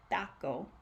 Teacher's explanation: Instead of tie with the same puff of air, you would say something like taco in Spanish, and it doesn't have that puff of air, and it almost sounds like your tongue is stuck, taco, and it feels a little weird because we automatically put that puff of air.